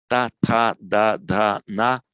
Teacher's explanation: Dental, because the tongue touches the ridge at the back of the teeth. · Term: dentals